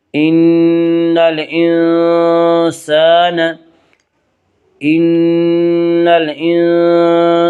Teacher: ان الانسان، ان الانسان الف مدہ، الف ہمیشہ مدہ ہوتا ہے، الف سے پہلے ہمیشہ زبر ہوتا ہے، الف مدہ کو ایک الف کے برابر کھینچ کر پڑھیں گے